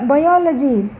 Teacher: సఫిక్స్కి ముందు శబ్దానికి ప్రారంభంలో స్ట్రెస్ వస్తుంది